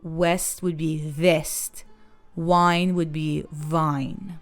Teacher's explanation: V and W merge, so west would be vest. Wine would be vine.